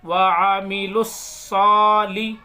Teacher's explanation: واو کو اس لیے نہیں پڑھ رہے کیونکہ اس کے اوپر زبر زیر پیش کچھ بھی نہیں ہے. وعامل تو لام کو ڈائریکٹ صاد میں ملائیں گے